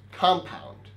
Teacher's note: if it's a noun then it's the first syllable that's stress